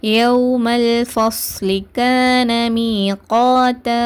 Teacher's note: யௌமல்லுன்னு சொல்லிட்டு நம்ம இணைப்போம், ஆனால் குன்னா செய்யக்கூடாது. சுக்குன் பெற்ற லேமுக்கு குன்னா செய்யாமல் யௌமல் மட்டும் நம்ம இணைக்க மட்டும் தான் செய்யணும்.